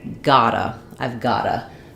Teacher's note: we're dropping that T and changing it to what's called a flap T